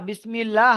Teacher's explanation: যখন জের থাকে আল্লাহ শব্দের ডানদিকে যখন জের থাকে তখন আল্লাহ শব্দের লামকে বারিক করে পড়তে হয়